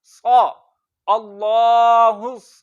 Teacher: उसके बाद हमने देखा कि साद के ऊपर जबर है तो मुंह खोल के पढ़ेंगे और इसको लंबा नहीं करेंगे